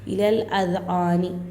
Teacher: الف لام کے بعد ہے نا حمرے کا حمزہ کر ہے تو الف کو چھوڑ کر لام کو لام سے ملا کر پڑھنا ہے. الف لام کے بعد زال کر ہے اور زال کا آواز آنا چاہیے، زا کا نہیں.